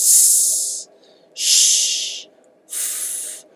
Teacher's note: I'm not using my vocal cords. In fact, you could even whisper. If you're whispering, you're not using your vocal cords.